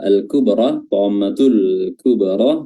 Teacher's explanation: Nah, di sini juga ada alif lam qamariyah atau izhar qamariyah, ya. Lam sukun bertemu dengan huruf kaf. Lamnya dibaca izhar atau dibaca jelas